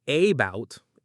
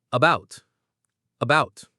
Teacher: That means the first part, the A, is weak. It's unstressed. So what happens to it? It becomes a schwa. It's not a bout, it's about.